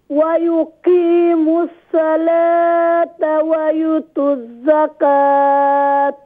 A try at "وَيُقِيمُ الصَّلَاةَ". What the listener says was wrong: Also have a sad in as-salah. Have to read full mouth, please. وَيُقِيمُ الصَّلَاةَ وَيُؤْتُ الزَّكَاةَ Ya joint with Hamza. وَيُؤْتُ الزَّكَاةَ Don't read zakat. When you reading round ta, have to read. When you stopping, you have to read ha. Don't read ta. Wa yu'tu zaka. Wa yu'tu zakata.